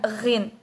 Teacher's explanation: Huruf ghin dalam bahasa Arab ini bersifat atau keluar dari makhraj qasiyun tabaqiyun atau belakang lidah dan langit-langit lunak. Nah, sedangkan sifat ghin ini itu bersifat ihtikakiyun majhurun. · udara yang dikeluarkan tidak terhambat penuh dan bunyi yang keluar ya itu disertai dengan getaran gitu.